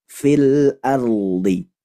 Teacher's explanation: huruf ro sukun jika sebelumnya fathah maka dibaca tafkhim atau tebal.